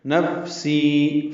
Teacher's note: فا ساکن ہے، اس میں سانس جاری رہتی ہے، ہمس ہوتا ہے۔ سی یا مدہ ہے، 2 حرکات لمبا کرنا ہے۔